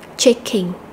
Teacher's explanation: trong câu này thì chúng ta có động từ checking chúng ta sẽ nhấn âm đầu